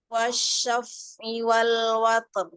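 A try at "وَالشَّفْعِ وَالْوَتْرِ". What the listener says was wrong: Ya, ro-nya sempurnakan masih kurang jelas huruf ro sukunnya di wakof. Ya, huruf fa-nya dialirkan. Wasyaf.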